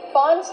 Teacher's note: do not pronounce the word Fanta it is pronounced f f use the short a sound before the N it changes a little bit it becomes a little more nasal in your nose